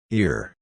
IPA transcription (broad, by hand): ɪr